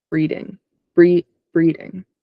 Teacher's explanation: It looks like the closest would be like breeding, but it could be like a rolled R. And the emphasis would be on the first syllable. So like breeding.